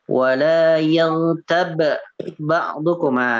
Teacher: tidak dikolkolahkan, tapi dimasukkan ke huruf atau diidghamkan ke huruf ba yang kedua. Karena sangat sulit, ya, sangat sulit untuk membaca dua huruf yang sama, yang satu mati, yang satu hidup, ya. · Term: mislain